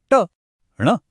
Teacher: महसूस कीजिए कि जीभ की नोक कैसे मुड़कर ऊपर कठोर हिस्से को छू रही है। बस यही वो कर्ल है यही वो घुमाव है जो इन ध्वनियों को खास बनाता है। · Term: मूर्धन्य, मूर्धन्य वर्ण